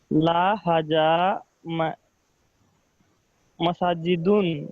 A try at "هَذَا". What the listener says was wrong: Okay, while pronouncing haza, you have to omit your j sound and put z sound. Haza, not haja. Okay, haza, haza.